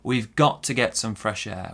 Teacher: Our stress here is on got. Now also on to, it's a weak to